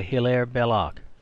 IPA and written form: hɪˈlɛər ˈbɛlək (Hilaire Belloc)